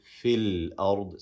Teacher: And when we continue what comes before it, we say fil ard, skipping this hamzat al-wasl.